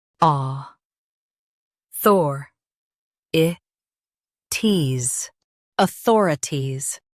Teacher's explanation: Stress thor and keep i ties light. aw thor i ties, authorities Stress thor and keep i ties light.